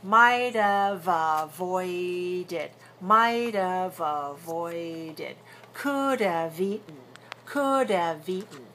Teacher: pronounce the v sound and link the sound from one to the next. But if the next word is a consonant, then you may delete the v altogether, and that helps you make it more reduced.